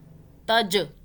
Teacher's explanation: جیم پہ قلقلہ جھٹکے سے پڑھنا ہے